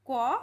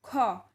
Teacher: ক উচ্চারণ করার সময় অল্পশ্বাস লাগছে হাওয়াটা আমাদের হাতে কম ঠেকছে আর খ উচ্চারণ করার সময় হাওয়াটা জোরে এসে আমাদের হাতে লাগছে